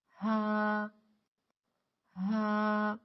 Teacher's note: یاد رکھیں کہ ہا کی ادائیگی میں سانس زیادہ نہ نکالے